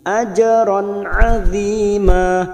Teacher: Ajron fathah tanwin yang bertemu ain idhar halqi, dibaca jelas tanpa mendengung